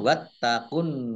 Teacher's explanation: Taknya dibaca double, ada tasdidnya.